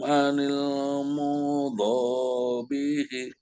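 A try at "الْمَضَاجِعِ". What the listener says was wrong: Anil madoji'i. Ain, Pak. Bapak coba ainnya udah bagus waktu itu. Anil madoji'i, suara senggal di hidung.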